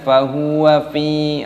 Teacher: fa-nya dibaca panjang, ada ya sukun, dibaca panjang. Fahuwa fi ya sukun, dibaca panjang nya.